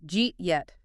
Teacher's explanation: >> Well, it's the path of least physical resistance for the mouth. The hard D of did and the Y of you smash together at high speed and create that J sound.